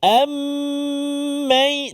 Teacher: mim mati bertemu dengan mim dengung 2 harakat